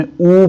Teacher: اسی طرح سے ہم نے جب واو کو پڑھا، الف پیش واو یہ ساکن تھا تو پیش کے ساتھ ہم نے او پڑھا، آواز لمبی ہو گئی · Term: مد